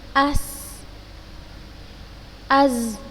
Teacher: tajamnya suara karena ia keluar dari celah yang sempit antara ujung lidah dengan dua gigi seri atas dan bawah